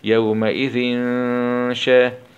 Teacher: ذال كسرتين مع الإخفاء الحقيقي